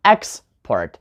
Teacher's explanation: if you put the stress on the first syllable, then you have a noun, export